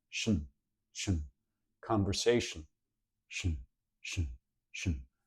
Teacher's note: the vowel goes away completely and you do a little bit of a syllabic N where it's almost acting like a vowel